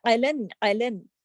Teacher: عین کو دیکھیے حلق، حروف حلقی ہے نا، تو عین کو حلق سے ادا کیجیے